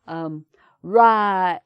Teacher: the i of right, it gets longer in the northern accent